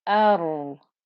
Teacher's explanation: The ra gets time because of the sukoon, and you can hear the sound of the ra. It's thick and heavy.